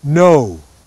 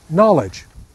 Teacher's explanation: Our O, O, the big O, is a diphthong.